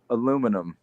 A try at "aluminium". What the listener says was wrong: You're adding an extra L. You're adding an extra L that doesn't exist, and then you're mispronouncing the rest of the word. Because there's one L, and you're saying aluminium. You're adding an extra L. You are.